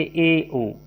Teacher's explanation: अर्ध संवृत स्वर का अर्थ होता है मुख का थोड़ा अधिक खुलना,